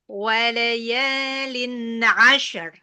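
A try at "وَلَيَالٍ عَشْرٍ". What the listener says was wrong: Nah, tipis nih. Asyr, gitu tadi. Asyr.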